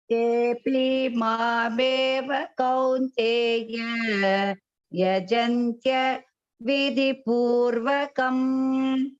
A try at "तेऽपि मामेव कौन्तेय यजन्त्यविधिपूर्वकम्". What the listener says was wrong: அந்த தேபி சொல்லும்போது avoid த தீர்க்கம். தேபி தேபி மாமேவ இல்லாம தேபி மாமேவ கௌந்தேய யஜந்த்ய விதிபூர்வகம்.